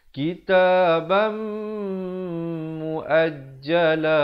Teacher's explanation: Hi kitabam, idgham bi gunnah di sini, tanwin bertemu mim, dengungkan dua harakat. Kitaban, asalnya ba tanwin di atas bunyi ban, tapi bila datang mim kena masuk beserta dengung dua harakat. Kitabam muajjala, muajjalan bila waqaf menjadi la dengan kadar dua harakat.